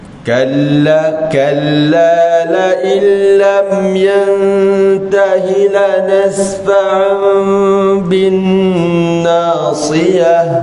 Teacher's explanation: Nasfa'an macam mim, tapi seakan-akan kita buka sedikit mulut kita, bibir kita ni, supaya kita nak bezakan dengan ikhfa syafawi. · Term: iqlab